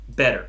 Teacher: So it's just not very aspirated when you say it softer. It sounds more like a D, but it's sort of halfway.